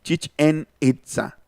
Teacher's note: se les quedó la consonante glotal del maya y ellos la pronuncian inconscientemente, pero dentro del español